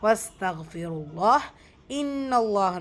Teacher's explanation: அல்லாஹ்ங்கிற லாமுக்கு முன்னாடி பார்த்தா இங்கே ஹெவியாக தான் அந்த அல்லாவுடைய லாமை ப்ரொனவுன்ஸ் பண்ணணும்.